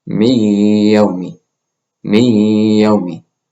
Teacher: And this ghunna is a nasal humming quality. · And here we have min يوم الجمعة. Drop the noon sound, merge it with the ya, and make a ghunna. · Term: idgham